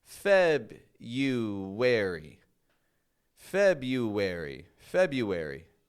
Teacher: in this day and age, we drop that first R and we say just February. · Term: silent R